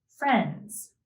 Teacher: the D sound is often dropped in the word friends